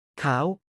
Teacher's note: This is not a real Thai word, but it demonstrates the high tone with a long vowel.